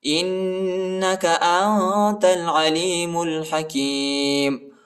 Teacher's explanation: میم کو لام کے ساتھ ملائیں گے، الف نہیں پڑھا جاتا، اس کے اوپر حرکت نہیں ہے